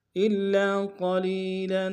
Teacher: قاف کو موٹا ادا کریں گے، لام کو یا کے سامنے آئیں گے، یا مدہ ایک انتظار میں کھینچیں گے، لام کے اوپر تنوین غنہ کریں گے.